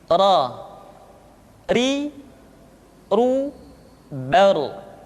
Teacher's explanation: Berikutnya adalah huruf ra, diucapkan dengan menyentuhkan punggung lidah dengan langit-langit.